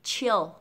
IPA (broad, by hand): 't∫ɪld